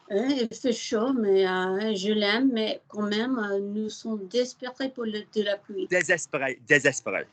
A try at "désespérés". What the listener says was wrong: Désespéré. Lovely.